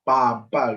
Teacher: hanya menggunakan bilabial, yaitu dua bibir kita, papa gitu, dan proses dari keluarnya udara dari mulut kita.